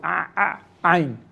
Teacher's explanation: So Ain is more of a glottal sound from the throat.